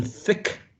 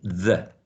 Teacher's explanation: the only difference between th and the is voicing · Both of them are interdental. Both of them are oral. Both of them are fricative. Voicing, the only difference.